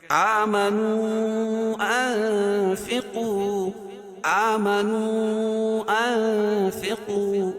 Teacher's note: آمنوا انفقوا، آمنوا انفقوا، اخفاء حقیقی، ناک میں آواز ہم چھپا کر پڑھ رہے ہیں، یہ اخفاء کی آواز ہے۔